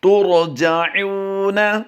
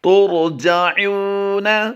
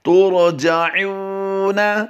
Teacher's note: ترجعون، پھر ادائیگی کیجئے اس کی تا را پیش ترجعون۔ عین کی ادائیگی بھی ہم نے کرنی ہے اور عین واو پیش او کو ہم نے لمبا بھی کرنا ہے